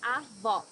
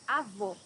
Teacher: Avó, grandmother. Here you need to hear the sound of the last O in the syllable. It should be an open O, as we say in Portuguese.